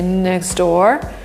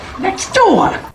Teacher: But if we want to sound more American, we'll say next door, where the T disappears and 2 words get linked together.